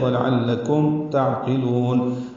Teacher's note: کاف باریک ہے، میم ساکن پہ اظہار شفوی ہے، ولعلکم تعقلون، عین ساکن پہ اظہار ہے یعنی عین ہلے نہیں